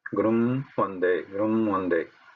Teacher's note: the sound of makara which has to come through mouth has to now purely come through nose only. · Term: anuswara